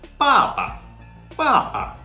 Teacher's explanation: you just have to say it no falling or rising of the voice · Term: neutral tone